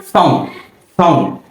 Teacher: আমাদের জিহ্বাটা উপরের দাঁতের গোড়ার সঙ্গে একটু লেগে উচ্চারিত হবে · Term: দন্তস